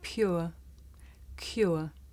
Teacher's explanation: the shape the mouth makes changes from the beginning of the sound to the end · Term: diff thong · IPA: ʊə